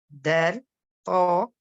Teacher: l'extrémité de la langue, il va s'appuyer sur la racine des incisives supérieures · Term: point de sortie